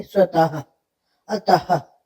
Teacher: की ध्वनि आती है वहां हम विसर्ग लगाते हैं जैसे स्वतः तो ह की ध्वनि आती है लेकिन ह नहीं लिखते